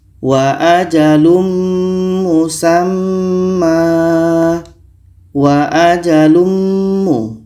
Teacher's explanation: Mim adalah huruf idgham bi gunnah. Maka tanwin ini kita masukkan ke mim dan kita baca dengung